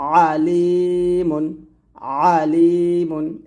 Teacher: আইনটা আপনাকে হলকের মাঝখান থেকে চাপ দিয়ে চিকন করে বলতে হবে